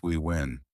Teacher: lips round and push forward like blowing a small OO, not touching teeth